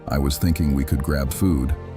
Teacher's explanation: with your voice going up at the end, you've just turned a suggestion into a request for permission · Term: Rising intonation